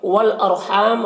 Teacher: والارحام را کو پر پڑھیں گے، پر پڑھیں گے یہاں پر